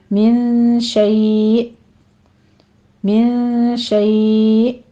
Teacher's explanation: آخر پہ حمزہ کا جھٹکا لے کر آنا ہے، اور شیء کو آپ نے یعنی مد لین عارض جو ہے اس کو آپ نے 3 کاؤنٹ کر لینا ہے۔